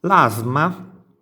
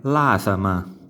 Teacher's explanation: L'asma in napoletano diventa l'asama. Quindi vedete quella vocale interposta tra S e M, in questo caso, rende scorrevole il suono.